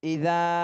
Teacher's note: যাতে তিন আলিফ টান দিতে হবে